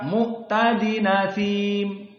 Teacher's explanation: Naql itu adalah hamzahnya dihapus. Karena susah untuk dibaca. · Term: an-naql